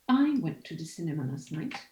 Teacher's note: your nucleus would be i and it would be the only sentence stress